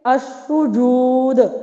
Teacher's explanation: یہاں پہ دال ساکن ہے تو ساکن پر جب وقف کریں گے تو یہ لیول ہوگا قلقلہ کا دوسرا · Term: ساکن وقفی